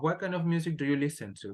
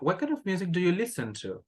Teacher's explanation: Remember that at the end, we need to rise the intonation.